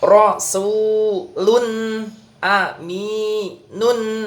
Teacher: lunya dibaca jelas ke makhrajan nun dan berikan gunahnya